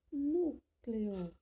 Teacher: Qual foi a sílaba mais forte ao ser pronunciada? O nu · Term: sílaba tônica